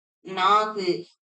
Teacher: குற்றியல் உகரம் என்பதற்கு குறுகிய ஓசையுடைய உகரம் அப்படின்னு பொருளு அதாவது உகர குறிலுக்கு ஒரு மாத்திரை ஆனால் குசுடு துபுறு என்ற ஆறு எழுத்துக்கள்ல ஏதேனும் ஒரு சொல் இறுதியில தனிக்குறிலை சாராமல் வந்தால் அதன் ஓசை குறுகி அரை மாத்திரை அளவு ஒளிக்கும்